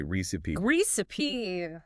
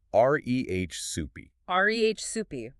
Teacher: R-E-H soupy, with the emphasis firmly on that first syllable